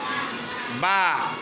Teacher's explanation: বা বর্ণের উচ্চারণের সময় আওয়াজ দুইটি ঠোট এসে থেমে গেছে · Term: দুই ঠোট